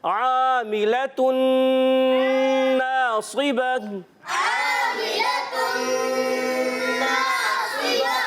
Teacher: عاملۃ ناصبہ، عاملة ناصبة، ماشاءاللہ عین الف زبر آ، عین کی ادائیگی حلق کے درمیان والے حصے سے